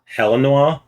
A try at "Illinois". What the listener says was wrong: There's no H in Illinois.